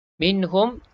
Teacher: Nun ni dibaca dengan izhar. Jelas dan terang kita sebut nun mati ni tak ada dengung.